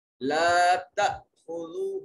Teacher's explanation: لا تأخذوه تا حمزہ جو ہے یہ ساکن ہے، جب حمزہ ساکن ہو جھٹکے سے ادا کرتے ہیں. خا حرف مستعلیہ میں سے موٹا اور پر کر کے پڑھا جائے گا